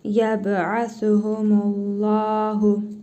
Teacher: Sonra Allah lafzı gəlib burada özündən əvvəl ötrə hərəkəsi gəldiyinə görə Allah lafzındakı ləm hərfini qalın tələffüz edirik.